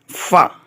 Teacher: ऊपर वाले 2 दांतों का सिरा और नीचे के होंठ का अंदरूनी हिस्सा, इससे फ़ा अदा होता है। यानी जो ऊपर वाले 2 दांतों का सिरा है उसे नीचे वाले होंठ के अंदरूनी हिस्से से लगाना है, इससे फ़ा अदा होगा।